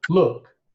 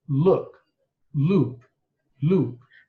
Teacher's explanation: the first one is short, look, and the second is long